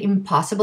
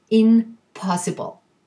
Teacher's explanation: ease of pronunciation it's easier to say impossible than in possible this is called an assimilation meaning that the two become similar they both become bilabial